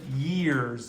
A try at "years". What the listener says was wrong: Years. I want you to start pronouncing the R more, not like an English speaker, an English speaker from England, more like a British American, where you do pronounce the R.